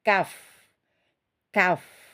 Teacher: ada udaranya mengalir tetapi suaranya tertahan atau tidak mengalir Kaf ak tertahan ak mana hamasnya baru kita lepas ak Ik